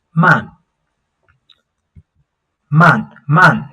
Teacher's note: Man means slow. That's a fourth tone.